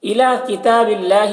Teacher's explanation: اللہ کلام کو باریک پڑھیں گے، اللہ کلام سے پہلے زیر ہے